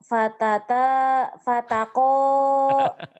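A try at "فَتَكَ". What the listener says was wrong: Fataka. Bunyi Jawa itu O.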